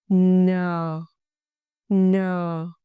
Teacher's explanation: Your tongue tip touch the upper gum ridge. Air through nose. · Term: final consonant n